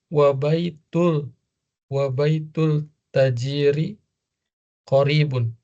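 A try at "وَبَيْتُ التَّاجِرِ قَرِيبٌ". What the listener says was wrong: Nah, wa baitut tajiri. Langsung masuk ke ta.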